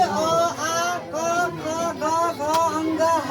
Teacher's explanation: जो कंठ से बोला जाता है इसे कंठीय वर्ण कहते हैं